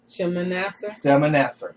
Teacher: for the Hebrew language, the S, even though it's an S, the S sound is a SH sound